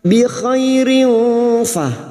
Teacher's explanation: Bi khairin fa kasrah tanwin bertemu fa ikfa hakiki kita samarkan bunyi kasrah tanwin dan mendengung selama 3 harokat